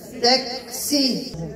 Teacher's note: ملي غنديرها لكم بالنورانية، بغيتكم تعلموا انحباس الصوت، ولكن ملي غنوصل للكاف، انحباس الصوت في الأول ما غاديش يخرج الصوت، ولكن ملي غنوصل للسين راه غيخرج النفس